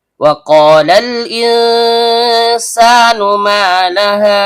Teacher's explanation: pangkal lidah naik ke langit-langit di atasnya. Karena qofnya berharakat fathah diikuti alif layyinah, maka terjadi hukum bacaan mad thobi'i.